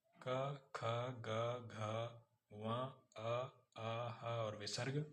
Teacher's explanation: कंठव व्यंजन इसके उच्चारण में केवल कंठ या गले का प्रयोग होता है। यह निचली जीव और कंठ के प्रयोग से बोले जाने वाले वर्ण कंठव्य कहलाते हैं। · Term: कंठव्य व्यंजन